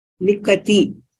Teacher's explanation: Yes, still I'm hearing slight Mahaprana for ta. So the ta remains Alpaprana, only kha is Mahaprana.